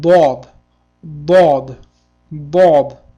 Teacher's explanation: bod harfi shovqinlik jarangli tish ortib portlovchi tovish hisoblanadi.